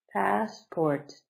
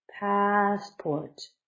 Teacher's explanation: Stress is on the first, so up high, passport, down low.